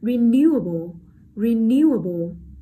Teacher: Renew, renew, đây là động từ cho nên là âm tiết rơi, trọng âm rơi vào âm tiết số 2